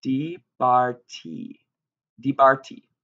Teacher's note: The main difference is going to be in that that dagesh in the middle consonant, and the hirik, or short vowel, in the first consonant, and longer vowel in the second consonant